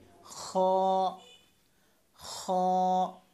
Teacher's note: খ হলকের শেষ থেকে, হলকের শেষ হচ্ছে, শুরু হচ্ছে এটা, শেষ হচ্ছে এটা।